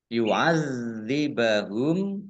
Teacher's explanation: zalnya dibaca double, ada tasdidnya.